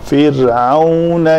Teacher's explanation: فرعون را جو ہے وہ پتلی پڑی جائے گی